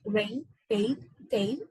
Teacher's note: In the diphthong A, the position of the tongue from the vowel A, which is a front vowel that is lower than the half closed position, and after that, the tongue moves to the direction of the vowel position I, that is a little above the half closed position, and the lips are spread. So, thus, it is gradually closing, such as rain, tail, etc.